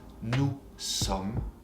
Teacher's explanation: You don't pronounce the S at the end.